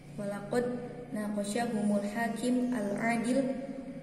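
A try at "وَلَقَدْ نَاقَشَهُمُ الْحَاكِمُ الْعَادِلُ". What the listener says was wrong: Naqashahumul hakimul adilu dibaca jangan disukunkan.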